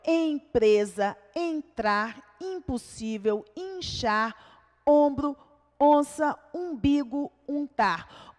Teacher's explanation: são as vogais acompanhadas de M ou N, tornando-as nasais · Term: Dígrafo vocálico